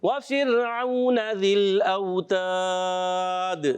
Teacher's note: را ساکن سے پہلے زیر آ رہی ہے اس لیے را کو اوپر پڑھیں گے باریک · واو ساکن سے پہلے زبر آ رہا ہے، واو لین کا قاعدہ ہوگا، نرمی سے ادا کریں گے. ذل اوتاد، لام کو ہلانا نہیں ہے.